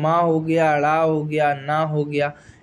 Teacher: अगर हम बात करें नाद की, इसमें स्वर तंत्रियों में कंपन होता है